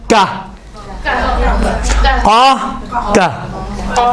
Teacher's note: کاف زبان کی جڑ تالو کی سخت والی جگہ سے لگتی ہے